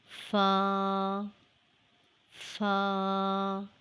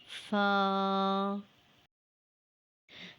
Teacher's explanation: It is pronounced when the tip of the two upper jaw teeth touches the inner part of the lower lip.